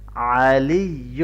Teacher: العین کو اچھی طرح سے گلے کے درمیان سے پڑھیں گے